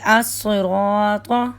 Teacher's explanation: را پر جب زبر اور پیش ہو تو را پور ہوتا ہے، موٹا کر کے پڑھا جاتا ہے، منہ بھر کر پڑھا جاتا ہے